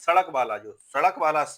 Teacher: सा जब बोलते हैं सड़क वाला सा जब बोलते हैं तो दोनों दांत एक दूसरे से मिलते हैं और हल्की सी दांत में आवाज आती है। तो ये दंत वर्ण हो जाता है सा।